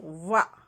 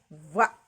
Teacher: ಮಾಡುವಂತಹ ಅಕ್ಷರ ಯಾವುದಪ್ಪ ಅಂದ್ರೆ ವ ಕೆಳತುಟಿ ಹೀಗೆ ಒಳಗೆ ಹೋಗುತ್ತೆ ವ ಅಂತ ಕೆಳತುಟಿ ಮೇಲಿನ ಹಲ್ಲಿಗಳಿಗೆ ತಗಲಿ ವ ಅಂತ ಹೇಳ್ತೀವಿ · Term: ದಂತೋಷ್ಠಿಯ